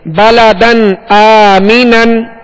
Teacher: حمزہ حروف حلقی میں سے، لہذا یہاں پر اظہار کر کے پڑھیں گے، غنہ نہیں کریں گے